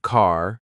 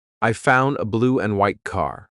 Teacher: My tongue is flat against the roof of my mouth to make the D, but it's not coming out.